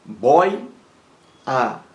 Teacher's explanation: o erro aí está na palavra bóia bóia com acento boya boya é uma palavra paroxítona possui duas sílabas